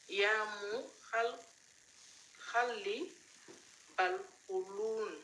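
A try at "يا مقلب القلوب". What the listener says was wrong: Non, ya muqallib al-qulub, le B à la fin. Ya muqallib al-qulub, le B.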